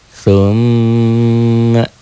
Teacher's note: Itulah gunnah. Dobel, ditahan dan dengung. Dobel, ditahan, ditahan ada panjangnya, ada madnya. Dengung ke hidung, itulah gunnah.